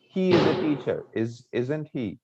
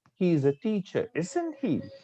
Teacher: isn't he or isn't she it has a rising tone or up tone